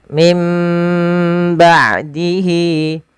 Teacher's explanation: Bagaimana tata cara membaca iqlab? yaitu suara nunnya diganti dirubah menjadi huruf mim